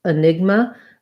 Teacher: we have second syllable stress